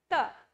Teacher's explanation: दंत से बोला जाता है। मतलब कि दांतों से बोला जाता है।